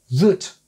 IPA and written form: ðət (that)